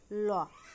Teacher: ল বলার সময় দুই পাশ দিয়ে বায়ু বের হয়ে যায়, এজন্য একে বলা হয় হচ্ছে যে পার্শ্বিক ব্যঞ্জনধ্বনি।